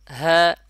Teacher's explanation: গলার শেষ ভাগ থেকে যেমন হা এবং বলার সময় এক আলিফ পরিমাণ টানতে হবে · এই যে হরফটি দেখতেছেন এই হরফটির নাম হলো হা। এটি হলো গলার শেষ ভাগ থেকে উচ্চারণ হবে।